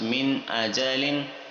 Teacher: من آجالن، کیونکہ یہ نون ساکن ہے گرین کلر میں، اس کے بعد حمزہ آ رہا ہے اور حمزہ جو ہے وہ حروف حلقیہ میں سے، اس وجہ سے یہاں پر اظہار کا رول ہوگا